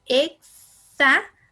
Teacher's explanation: esa X suena como una K y una S juntas. Es decir, una K y luego una S.